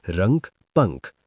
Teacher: अनुस्वार उच्चारण केवल नाक से, अ अक्षर का सहारा जैसे रंक पंख।